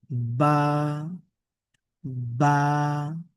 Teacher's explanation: আমাদের দুই ঠোট একসাথে লেগে এরপরে আমরা উচ্চারণ করব।